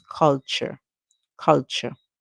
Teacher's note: of the times when t comes before Ur e in English we would hear the CH sound for the T